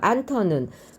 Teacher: 흐와 드가 만나서 트가 됐고요. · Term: 거센 소리